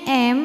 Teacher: idgham mimi sebab ada mim sukun yang menghadapi huruf mim berharakat cara bacanya mim yang sukun dileburkan ke mim kedua disertai bunyi dengungan